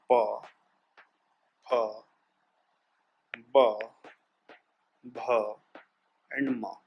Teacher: प से म तक, प से म, प से म तक का जो हमारा अंग्रेजी के हिंदी के जो लेटर्स होते हैं, इनको दोनों होंठ जब आपस में सटेंगे, दोनों होंठ जब एक दूसरे से मिलते हैं तब इनका हमारा उच्चारण होता है। जैसे प, फ, ब, भ एंड म।